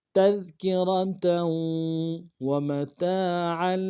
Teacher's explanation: تنوین کو واو کے ساتھ ملائیں گے، واو کے اوپر تشدید زور دیں گے ، تذکرة ومتاعا، اگلے واو کو نرم سے ادا کرنا ہے،